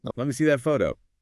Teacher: Let me frequently reduces to lemme.